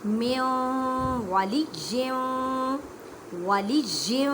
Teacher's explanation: इदगाम मा गुन्ना करें, मीन्स की गुन्ना करना है।